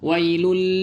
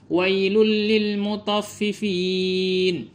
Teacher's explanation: Yang benar itu hanya dileburkan saja tetapi tanpa dengung. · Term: idgham bi ghairi gunnah